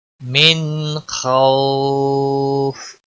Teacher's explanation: من خوف، آپ دیکھ رہے ہیں یہاں پر نون ساکن کے بعد حروف اکفا کا حرف آیا تھا اور اب یہاں نون ساکن کے بعد حروف حلقی میں سے خا آیا ہے تو یہاں پر اظہار ہوگا، نون کو ظاہر کر کے پڑھیں گے، اس اظہار کو اظہار حلقی کہتے ہیں۔